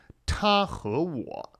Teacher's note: the t, little bit extra aspiration in Chinese